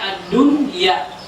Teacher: ada nun mati bertemu dengan ya ad-dunya. Tapi tidak boleh kita baca ad-duya.